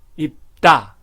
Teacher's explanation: 그다음에 받침 앞 뒤에서 입다. 입과 코를 막기 때문에 다가 따가 됩니다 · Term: 경음화